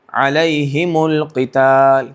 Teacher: یہاں پر روانی میں آسانی کے لیے پیش کی حرکت دی جاتی ہے